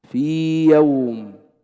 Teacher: ياء ساكنة قبلها كسر، ياء مدية لا تدغم في الياء المتحركة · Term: حرف مد